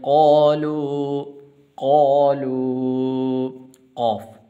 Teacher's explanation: وجنودہ قالوا قاف، قاف موٹا ہے، قاف اور کاف کے درمیان فرق کرنا ہے آپ نے